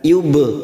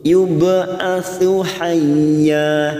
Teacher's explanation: ba sukun qalqalah sugroh karena mati asli di tengah kalimat kita pantulkan